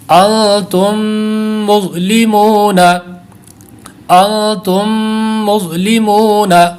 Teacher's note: میم ساکن کے بعد دوسری میم آ، تو اب یہاں پر ادغام شفوی کا قاعدہ لگ جائے گا، تو اس طرح یہاں 2 غنّے بنیں گے